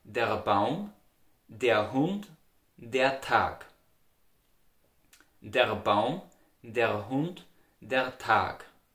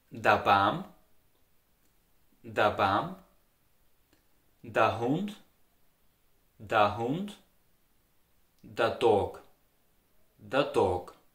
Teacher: In the Austrian dialect, the article for the masculine nouns, der, is widely pronounced da. You see, my mouth is wide open and widely relaxed.